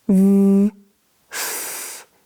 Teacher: These sounds are created by touching your bottom lip using your top teeth. Make sure that you're not biting, otherwise it's going to sound like and that's not a sound we have in English. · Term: v and f